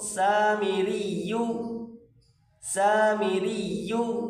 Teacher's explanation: سین الف زبر سا، سین الف زبر سا، میم زیر می، سامی، را یا زیر ری یا پیش یو، را اور یا آپس میں ملائیں، سختی کے ساتھ پڑھیں یا کو، یا کے اوپر تشدید، را یا زیر ری یا پیش یو، پڑھیں گے اس کو سامیریو، سامیریو۔